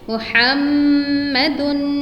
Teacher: We must say ha from our throat, a beautiful name with beautiful sound